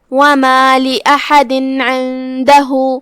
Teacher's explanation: پھر حرف العین ہے کلمت عندہ میں لہذا ہم یہ تنوین کو ظاہر کرتے ہوئے بغیر غنہ کے حکم کو ادا کریں گے · کلمت لأحد میں یہاں حرف الحا ہے, حا کی ادائیگی حلق کے درمیان والے حصے سے ہے. آخری میں دال ہے اور اس کے نیچے تنوین زیر ہے جو کہ تنوین کی اصلیت اور اس کی ادائیگی نون ہوتی ہے.